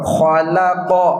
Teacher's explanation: لام زبر لا، لفظوں میں اس کی مثال ہے خلق، خا کی بھی پریکٹس کر لیو اور قاف کی بھی، خلق، لام کو موٹا نہیں پڑھنا، خلق۔